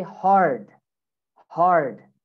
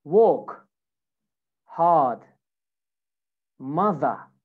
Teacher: Okay, so this is American English, work hard, mother. But in British accent, you drop the R. · So you basically don't say the R at the end of the words.